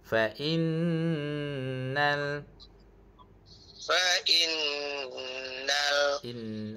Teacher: Sebab nun tu ada syaddah. Kat sini automatiknya cikgu kena dengung dua harakat. Okey. Nal kita kena kombine dengan huruf lam tu. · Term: wajibal ghunah